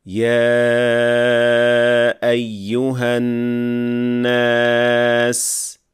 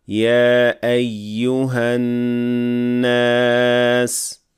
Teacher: And then within the riwayah we get some tajweed differences between the turuq, like elongating mad munfasil for 4 counts or for 2 counts